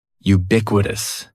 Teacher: And the stress is going to be on that second syllable.